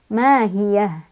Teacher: Ya, ini ha kalau berhenti tetap ha ya, ha gede ya. Ha yang bukan didorong dari dada melainkan dari tenggorokan.